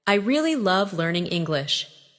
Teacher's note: Emphasize really and love.